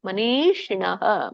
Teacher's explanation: ಶಿ ಮೇಲೆ ನಿಮ್ದು ನಾಲ್ಗೆ ತುದಿ ಮೇಲಿನ ಅಂಗಳಕ್ಕೆ ಹತ್ಬೇಕು.